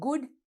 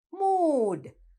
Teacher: It's a short oo sound when we say good, but when we say mood, it is a long oo sound.